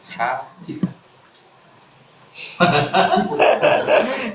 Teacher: Ha, tenggorokan bagian tengah. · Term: huruf ha